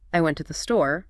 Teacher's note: so in a sentence like I went to the store the words went and store would be stressed exactly it's like you're shining a light on the important information